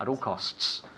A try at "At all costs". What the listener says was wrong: need to hear the two S's.